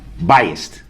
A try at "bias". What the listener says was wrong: No, bias. B-I-A-S. Not, there's no T at the end. Bias.